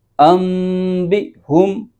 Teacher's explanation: تو نون ساکن کی جو آواز ہے اس کو میم سے بدل کر اخفا کریں گے، غنہ کے ساتھ پڑھیں گے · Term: اقلاب